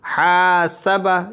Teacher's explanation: جس کے ساتھ الف رہے گا اسے کھینچنا ہے۔ ہا کے ساتھ الف ہے تو ہا کو کھینچیں گے، سین اور با کے ساتھ کوئی مد نہیں ہے یعنی الف نہیں ہے تو اسے نہیں کھینچیں گے۔ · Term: الف مد